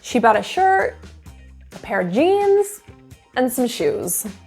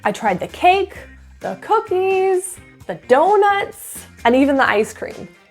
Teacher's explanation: let's practice in lists and get the feeling of singing up and down at the end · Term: downward intonation